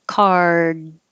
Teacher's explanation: So you don't have to release the D, card. But my tongue is curled back for the R